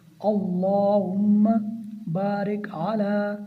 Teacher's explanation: अल्लाहुम्मा बारिक अला, और यहाँ पर भी अल्लाह मुबारक अला नहीं पढ़ना, अल्लाहुम्मा अल्लाह के नाम को मोटा पढ़ना है।